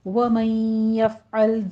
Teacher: وَمَن يَفْعَلْ میں نون ساکن کا قاعدہ ادغام الغنہ کریں گے، فا پر حمز ہوگا اور لام کو سٹاپ کریں گے، لام کو جھٹکا نہیں دینا